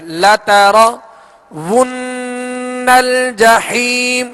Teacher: यहां हमने गुन्ना किया, नून मुशद्दद है, इसके ऊपर तशदीद है।